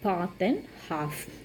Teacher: they use a long back vowel ah in words like path and half